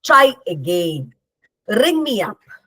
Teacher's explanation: they have a stressed syllable, try, ring, followed by an unstressed syllable. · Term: similar stress patterns